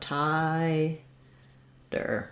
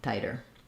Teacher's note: an i diphthong so you see that as thai and then in english we tend to for both of these words use a flap t here so um it'll sound the same as if we used 2ds